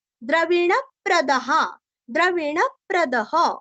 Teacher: हल्का सा प का आघात प की छाया आएंगी क्योंकि आगे प्र है